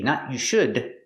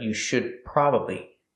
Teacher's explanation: The D in should is a stop D. Don't release the D. Not you should, but you should probably.